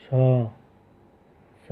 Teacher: हिंदी के सा ध्वनि जो है वो तालव्य ध्वनि है